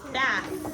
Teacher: the unvoiced TH, your vibrations are off, so it's kind of flat. But you still have to stick your tongue out to say this sound.